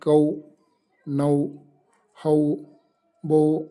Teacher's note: ಇನ್ನು ಔ ಅಂತಕ್ಕಂತಹ ಎ ಪ್ಲಸ್ ಯು ಸೇರಿ ಔ ಡಿಪ್ತಾಂಗ್ ಆಗಿದೆ.